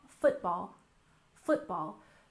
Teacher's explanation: football also has stress on the first syllable